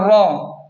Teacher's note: را کو پر پڑھیں یعنی موٹا پڑھیں کیونکہ را پر زبر ہے